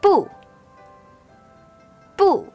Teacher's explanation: The fourth tone is represented by a dropping line which starts at a high pitch but sharply drops to the bottom. The fourth tone is very similar to the tone we use when we get angry, just like when we say, oh no.